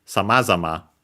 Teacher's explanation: it's actually accented on the ma, on the first ma, samazama, so low, high, low, low